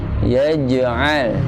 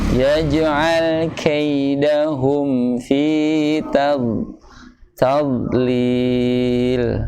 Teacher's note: Ya, karena tidak mempunyai hamas. Ya, sifatnya adalah jahar. Yaj'al. Qalqalah dan mempunyai sifat jahar.